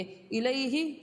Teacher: اور آپ سوچ رہے ہوں گے میں الف کو حمزہ کیوں کہہ رہی ہوں، کیونکہ حروف الف کے اوپر جب کوئی حرکت آتی ہے تو وہ حمزہ ہو جاتا ہے، اس لیے یہاں پر یہ حمزہ ہو گیا۔ الیہ میں یا ساکنہ سے پہلے زبر ہے یا لین ہے، اس کو بغیر کھینچے گئے بغیر جھٹکا دیے پڑھیں گے